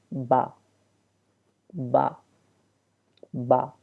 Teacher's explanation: اس کے بعد ہمارے پاس دوسرا ورڈ ہے با۔ با جو ہے تو دونوں ہونٹوں کے ملنے سے ادا ہوتا ہے